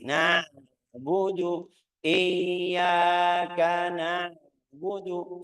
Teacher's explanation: Kita butuh belajar al-ain wal ha, makhrajnya dari tengah tenggorokan.